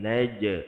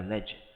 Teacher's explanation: jim ada qalqalah tanpa angin